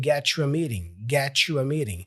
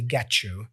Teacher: The T for get and the Y for you, we kind of put them together with this ch sound. So we say get you. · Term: connected speech